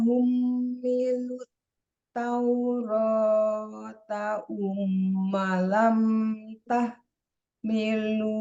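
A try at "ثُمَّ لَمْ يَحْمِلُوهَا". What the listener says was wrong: Summa lam yah. Titiknya di bawah.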